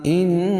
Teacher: ان نون مشدد غنہ ہوگا